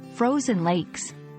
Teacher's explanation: frozen lakes should be pronounced with a clear Z sound in frozen and a soft S at the end of lakes